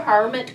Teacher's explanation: I think it sounds better with the accent on the first syllable